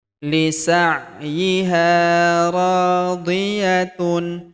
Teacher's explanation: Huruf ro kita panjangkan 2 harokat karena terdapat tanda alif di depannya